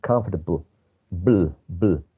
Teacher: This probably schwa in between b and u. So many people do not pronounce the schwa, just comfortable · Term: elide